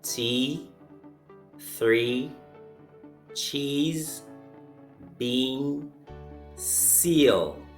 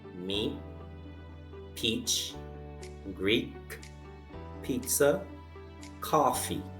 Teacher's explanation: in these words the e sound on the left are longer than the ones on the right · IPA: iː